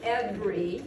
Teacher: so i've cut out a syllable because every syllable has to have a vowel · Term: schwa syllable